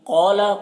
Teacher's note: قوف کو پر پڑھیں گے، قوف حروف مستعلیہ میں سے ہے اور یہ الف مدہ ہے تو ایک الف کے برابر کھینچ کر پڑھیں گے۔